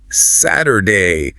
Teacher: You might even hear the T soften to a D sound. Saturday. Again, it's just about linguistic efficiency.